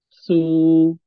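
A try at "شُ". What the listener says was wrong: Bukan su, tapi shu. Shu.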